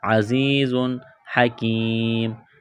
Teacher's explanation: تنوین کے بعد ہا ہے، حروف حلقی ہے تو تنوین پر غنہ نہیں کریں گے، آواز ناک میں نہیں چھپائیں گے، عزیز حکیم، کاف کو باریک کرنا ہے، یا ساکن سے پہلے زیر ہے، حروف مدہ یا ہے، ایک الف کے برابر کھینچنا ہے۔